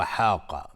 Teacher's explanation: قاف از حروف استعلا غلیظ تلفظ میشه